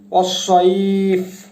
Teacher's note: ইয়া সুকুন তার আগের হরফ যে জবর, যে কারণে আমাদেরকে 2 হরকত 4 হরকত বা তারও বেশি পরিমাণ টান দিতে হবে